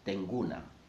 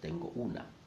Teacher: the O in tengo was sacrificed, and the person said tenguna instead of tengo una